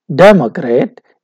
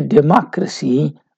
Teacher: When we say democrat, d is stressed. When we say democracy, ma is stressed. So you can see this change taking place, two changes, stress change as well as the consonant vowel change.